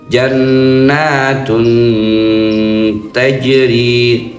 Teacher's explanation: tun fathatain ketemu ta ikhfa. Tahan tiga ketukan.